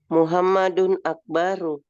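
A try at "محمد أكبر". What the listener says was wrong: Oke, ada panjang mbaknya. Muhammadun Akbar. Muhammadun Akbar. Hanya banyak jangan dipanjangkan. Akbar. Allahu Akbar, Allahu Akbar.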